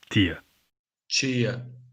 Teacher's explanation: In Portugal, it's T, though the vowel may be reduced in unstressed syllables. In Brazil, it's chi.